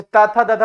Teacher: जैसे ता था दादा बोलो, दंत से पूरी उसका लगाव है